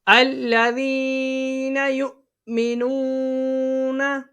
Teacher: حمزہ ساکن اس کو ہمیشہ جھٹکا دے کے پڑھتے ہیں